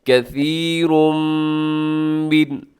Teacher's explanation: کثیرم من، اب یہاں اس کے بعد کثیرن کے آخر میں تنوین ہے اور تنوین کے بعد میم ہے، تو آپ نے یہاں کیا کرنا ہے کہ آپ نے یہاں ادغام کرنا ہے، کیونکہ میم حروف یرملون میں سے ہے، آپ ادغام کر دیجیے گا غنے کے ساتھ